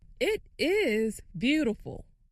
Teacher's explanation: makes the word is longer and louder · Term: stress